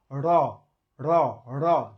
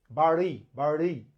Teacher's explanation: জিহ্বার গোড়া দিয়ে আঘাত করা লাগে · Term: তাড়নজাত ধ্বনি